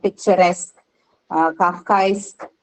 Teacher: Isk also takes the stress on itself.